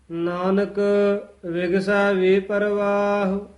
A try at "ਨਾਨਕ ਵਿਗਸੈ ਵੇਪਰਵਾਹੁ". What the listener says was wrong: ਇਹ ਵੀ ਵੇਪਰ ਰਾਰੇ ਤੋਂ ਨਹੀਂ ਤੋੜਨਾ ਹੈ, ਵਾਵੇ ਤੋਂ ਡੈਸ਼ ਦੇ ਕੇ ਲਮਕਾ ਕੇ ਉਚਾਰਨ ਕਰਨਾ ਹੈ। ਪਾਠ ਇਕੱਠਾ ਹੀ ਹੈ। ਵੇ ਪ੍ਰਵਾਹ, ਔਂਕੜ ਵੀ ਉਚਾਰਨ ਕਰਨਾ ਹੈ।